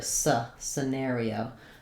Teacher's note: You could also say it with an I sound, sih-NAIR-ee-oh. Most important is that it's not a clear vowel, but a reduced vowel in that first syllable. And then letters AR say the air diphthong, and letter I says E, letter O says O, scenario. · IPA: /sɪˈnerioʊ/